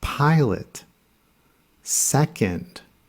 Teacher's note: When a word is stressed in the first syllable and there's an O sound in the last syllable, it's actually quiet. The O is schwa.